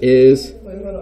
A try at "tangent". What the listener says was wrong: Tangent. Tangent. There's no r.